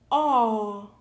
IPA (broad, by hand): Ɔ